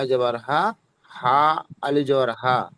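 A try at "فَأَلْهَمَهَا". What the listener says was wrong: মাঝখানে, দুটো হার মাঝখানে কোন অক্ষরটা আছে বলেন তো? হ্যাঁ, তো ওটা বলবেন তো, ওটা আপনার ছেড়ে যাচ্ছে।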